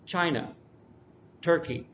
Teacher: the first syllable is emphasized more it just sounds louder because we emphasize it more